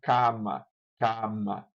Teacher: Mas isso acontece com certeza, por exemplo, no espanhol e no italiano, em que um italiano leria isso aqui como cama, cama, porque a vogal oral ela vai ser toda produzida e a nasalização só vai ocorrer na consoante, não na vogal